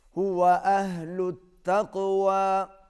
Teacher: ہم لام کو تا کے ساتھ ملائیں گے، کیونکہ تا کے اوپر تشدید ہے، اور جس حرف پر تشدید ہوتی ہے وہ ہمیشہ پہلے حرف کے ساتھ ملتا ہے۔